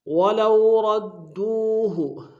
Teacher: ولو میں واولین ہے بغیر کھینچے پڑیں گے، را کو موٹا ادا کرتے ہوئے دال کے سامنے آئیں گے، شدہ زور دیں گے، دال کو واو کے سامنے آئیں گے، واو مدہ ایک اسم میں کھینچیں گے۔